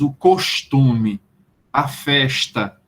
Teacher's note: o costume nordestino é que um S antes de um T seja palatalizado